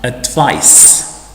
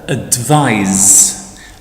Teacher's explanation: Advice, when written with C, it's pronounced, as it is in here, it's pronounced advice with S, with the sound S, and it's the noun. If it's written with an S, so it's spelled with an S, it's pronounced with Z, advise, and that's the verb.